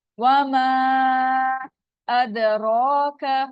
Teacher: दाल साकिन है, इस पे कलकला है